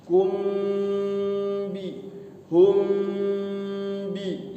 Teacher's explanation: Ikhfa syafawi itu apa? Hurufnya adalah mim mati ketemu dengan ba. Jadi sama mingkem juga. · Mimnya itu didengungkan. Cuman ini mah hurufnya mim mati bertemu ba.